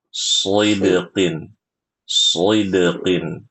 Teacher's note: ketika membaca shad kasrah dia punya sifat namanya itbaq. Betul. Maka harus dibaca dengan tebal.